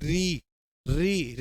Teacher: री जो बोलोगे वो मसूड़े पे लगेगी जी, बोलो री, री री लग रही है ना। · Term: मूर्धन्य